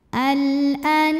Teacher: Huruf ra dibunyikan secara tafkhim karena barisnya dhammah, maka dibacanya tebal.